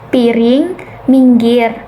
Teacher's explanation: tinggi, bawah, depan dengan posisi mulut semi tertutup ini menghasilkan bunyi seperti piring, minggir. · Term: bunyi I yang kedua